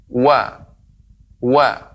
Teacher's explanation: kedua bibir di monyong kan kedepan dengan membuka sedikit celah